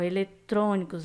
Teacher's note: A vogal tônica em eletrônicos é fechada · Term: som fecha